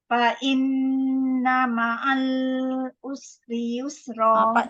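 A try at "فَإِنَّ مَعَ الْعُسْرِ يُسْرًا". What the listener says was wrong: Lama sikit usri yusra. Lepaskan rakhawah dia.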